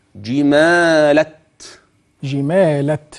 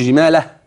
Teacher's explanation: يقف باثبات التاء مفتوحه